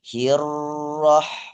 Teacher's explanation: Ini di atas ro ada tasydid, ada penekanan. Berarti juga harus ditahan sejenak.